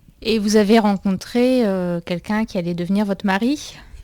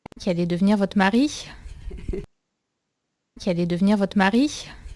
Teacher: Now, two things that I want you to notice in addition to what I've shown in these comments here are one is this Marie. She's going to make a little breathing sound right after the R.